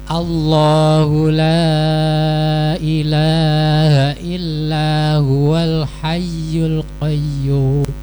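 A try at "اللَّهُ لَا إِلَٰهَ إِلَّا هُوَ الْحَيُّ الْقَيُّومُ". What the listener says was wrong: Ya, yang ilaha ini kepanjangan. Ilaha, harusnya ilaha, singkat saja.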